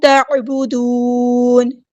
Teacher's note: عین کو وسطی ہے لیکن مل تھروٹ سے ادا کرنا ہے، نون کو ہم ساکن کر دیں گے وقف کرتے ہوئے، مد عارض بھی ہوگی.